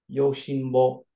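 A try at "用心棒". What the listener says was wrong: So this word actually has some rendaku right here. So normally it would be yoshinbo, but here it's actually yojinbo.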